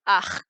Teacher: And it may be that some of the more southerly dialects of Scottish Gaelic do or did, but for most of them, we're, to make it easy to say, pronouncing it in the same place of articulation as the h, which is just like a velar stop